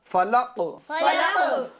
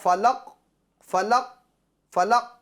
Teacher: اس پر وقف کریں گے، روکیں گے، تو قاف کی آواز لوٹے گی